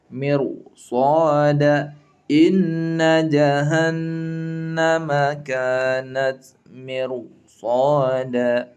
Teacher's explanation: Ra-nya tebal. Ra sukun tebal, tafkhim. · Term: ra tafkhim